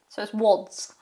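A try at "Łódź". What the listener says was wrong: So you want to pronounce it Wodge. Wodge. So a Z obviously must be more of a J than a Z. Because the Z obviously has the accent above as well.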